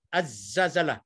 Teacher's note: Apabila dikatakan memasukkan huruf lam ke dalam huruf asy-syamsiyah ialah contohnya untuk az-zazalah. Lam dah tak sebut langsung. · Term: alif lam asy-syamsiyah